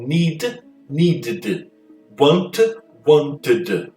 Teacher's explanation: Não tem como fazer isso. Então eu coloco um som de I e crio esse link. · assim que eu transformo no past simple, eu transformo para duas sílabas, porque eu estou criando uma sílabazinha aqui no final